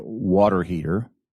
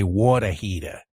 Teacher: they don't pronounce the r on the end of the word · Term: drop the RS